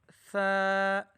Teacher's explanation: ज़बान की नोक जब सनाया उलिया के किनारे से लगे तो हर्फ सा अदा होगा।